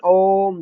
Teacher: तीसरा होता है प्लुप्त स्वर, जो लंबा खींचना पड़ता है